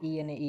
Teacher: ઈ અને ઈ તાળવામાંથી બોલે તાલવ્ય કહેવાય.